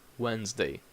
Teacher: see the difference you have two silent letters Wednesday and also these s in Wednesday has a Z sound